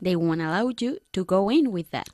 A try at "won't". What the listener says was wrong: They won't allow you to go in with that. Bien, pronuncia la T de una forma un poquito más marcada. La T de won't, ¿eh?